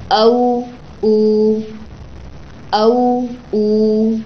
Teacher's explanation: جب آپ پڑھ رہے ہوں گے تو دونوں ہونٹ گول ہو جائیں گے.